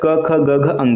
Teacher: क वर्ग का उच्चारण स्थान हमेशा कंठ होता है